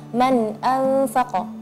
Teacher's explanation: sedangkan huruf fa itu tipis, maka gunnahnya seharusnya tipis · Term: gunnatul ikhfa